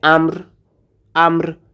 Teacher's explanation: ওয়াকফ করার কারণে রটা সাকিন হয়ে যাবে, অতএব এখানে হবে আমর